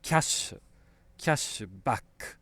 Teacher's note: we know that we get double sh. So the sh sound is going to be long.